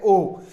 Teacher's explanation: पश्च में है यानी जीभ के पिछले हिस्से से बोले जाने वाला है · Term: अर्ध संवृत स्वरों